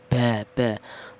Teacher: huruf ba keluarnya huruf keluarnya huruf berasal dari kedua dua bibir yang rapat